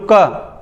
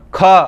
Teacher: महाप्राण मतलब इनको बोलने में ज्यादा हवा निकलती है मुंह से। मैं बोलूं क नॉर्मल ख ज्यादा हवा निकलेगी।